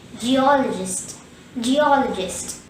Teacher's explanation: The second syllable all is stressed. There is one schwa in this word.